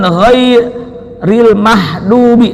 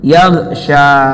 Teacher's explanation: Juga bukan ghairil mahdubi, salah juga. Ya, gha sukun tapi tidak memantul.